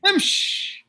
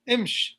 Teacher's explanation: because it's the end of the word, they don't pronounce the kasra, so they suffice with a sukoon